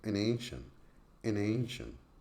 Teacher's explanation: at the connected speech level the word an is normally linked to the word ancient